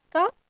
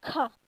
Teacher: जब हम ख का उच्चारण करते हैं तो मुंह से अधिक वायु निकलता है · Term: महाप्राण